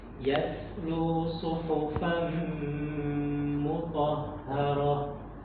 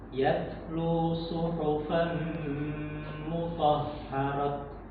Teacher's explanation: Nah, itu tak marbutoh ketika waqaf menjadi hak. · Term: hak sukun